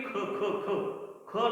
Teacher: मग कोणते ते, की पहा, समजा क चा उच्चार करताना तुम्ही क म्हणता, पण ख चा उच्चार करताना तुम्ही ख ख ख ख ला ह चा ठेका लावता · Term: महाप्राण